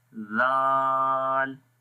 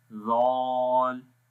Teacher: ज़ाल हर्फ को बारीक पढ़ते हैं इसलिए इसके अंदर सिफ्त इस्तिफ़ाल है। अगर आप इस शेप में ज़ुबान को देखें तो ये बैक साइड से ऊपर की तरफ नहीं जा रही है, इसका मतलब कि ये नरम और बारीक पढ़ा जाएगा।